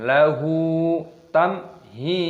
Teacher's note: Lahu tamhi, mim sukun bertemu dengan ha, idhar syafawi, dibaca jelas